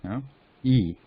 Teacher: It's not wide open like ah, but it is stretched horizontally